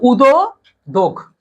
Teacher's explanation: যেমন ধরো আমি যদি এখানে এই এভাবে লিখতাম, হসন্ত দেই নেই, না দেওয়ার কারণে জান উচ্চারণটা কি আসতেছে, উচ্চারণ হচ্ছে উদো দোগ, অর্থাৎ এই দয়ের পর একটা অ আছে, এই গয়ের পর একটা অ আছে